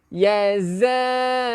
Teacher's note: Zai, kacipkan gigi. Perbezaan di antara zal dan juga zai. Kita kacipkan gigi untuk zai.